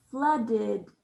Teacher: flooded has the id sound for the ed spelling